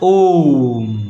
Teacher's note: ह्रस्व स्वर से तीन गुना समय जो लेता है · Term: प्लुत स्वर